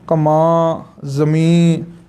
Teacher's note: ਬਿੰਦੀ 'ਚੋਂ ਅੱਧਾ ਨੰਨਾ ਬੁਲਾਉਣਾ ਹੁੰਦਾ ਹੈ